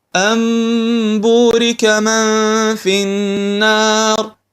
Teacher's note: في حالة من الحالات النون هذه تنقلب تصير ميم